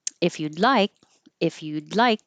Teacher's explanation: Meetup sound a little annoyed if you'd like if you'd like you're not going to hear this D because the D and the L are in the same position so just hold the D